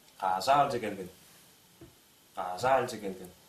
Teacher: «ш» быстрые речи переходят в «ж»